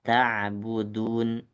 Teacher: Jadi ujung lidahnya kena dengan bagian tumbuh gigi seri depan. Ta'budun. Jadi jangan terlalu jauh ke langit-langit atas.